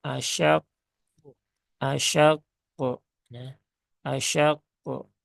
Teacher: harus besar pantulannya paling besar ya padahal ee enggak ya jadi ketika wakaf pada huruf qaf dan dia bertasdid maka cukup Jedah sebentar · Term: Qalqalah